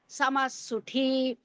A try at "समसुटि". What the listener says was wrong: समसुटी there is no mahaprana. There is no mahaprana there. Samasuti.